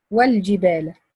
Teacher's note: From waw to lam second, I drop hamza til wasl.